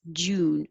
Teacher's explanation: So number 9 is a single syllable, just June, but you have to stretch the oo